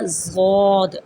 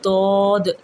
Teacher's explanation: برصغیر پاک و ہند میں یہ اسے پڑھتے ہیں ضاد، ٹھیک ہے، اور جبکہ سعودیہ عرب اور خلیجی ممالک والے اس کو دود، تو یہ دونوں مخرج درست ہیں، آپ دونوں مخرج کی ادائیگی کر سکتے ہیں۔